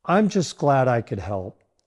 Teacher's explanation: Stress the word glad to show genuine happiness